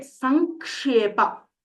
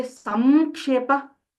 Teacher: When we try to say it together, the makara does not actually come. It is actually some given with anunasika. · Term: anunasika sandhi